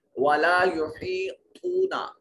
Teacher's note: یہاں یا مدہ ہے اور تو میں واو مدہ ہے اور طا کو موٹا کریں گے